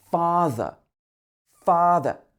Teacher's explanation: you don't pronounce the r at the end of the word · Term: silent r sound